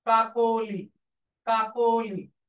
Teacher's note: তাহলে কাকলি না কাকলি আর নেই, হয়ে গেছে কাকলি। শব্দের মাঝখানে ওকার উচ্চারিত হচ্ছে